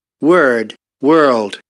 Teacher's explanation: So they're both not fully voiced, as they don't have fundamental frequency during all the pronunciation.